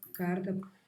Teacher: a paulistana, né, de São Paulo capital, realiza um TEP na posição final, né, de sílaba, e é a mesma realização da portuguesa.